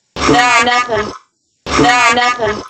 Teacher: We have the O diphthong, which she makes a little bit relaxed. It's not no, but more like no, no, no, nothing.